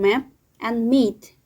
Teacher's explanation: The first one in bilabial nasal. This is complete closure between the lips, voicing an escape of the air through the nasal cavity. An example is the first consonant in map and meet.